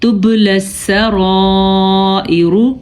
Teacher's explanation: را پر پڑھیں گے کیونکہ را کے اوپر زبر ہے اور مد بھی ادا کریں گے